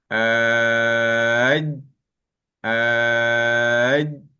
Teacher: Di bahagian tengah lidah. Pergi ke mana tengah lidah tu? Pergi ke lelangit atas. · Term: huruf jim